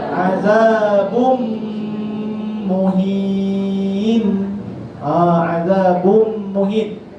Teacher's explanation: Itu contoh bagi idgham bi ghunnatin. Tetap berlaku gunnah, tapi cara bacanya idghamnya secara kamil.